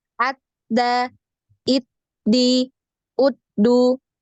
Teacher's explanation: Ee tertahan ya suaranya tertahan jadi seperti putus Suaranya putus